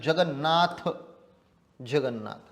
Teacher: न आणि न दोन अनुनासिक एकत्र जोडले गेले